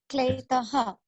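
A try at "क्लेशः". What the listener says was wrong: kleshaha. It is sha. Kleshaha.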